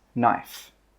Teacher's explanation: The K in this word is silent. That means we don't pronounce it. So when we pronounce this word, it's knife.